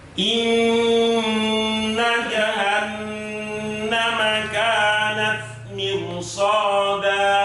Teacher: Nah, mirsadan di sini bertemunya adalah di dalam satu kalimat. Maka ro di mirsadan harus dibaca tafkhim.